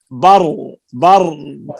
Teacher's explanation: را میں آ جائے گی توسط، نہ پوری طرح بند نہ پوری طرح جاری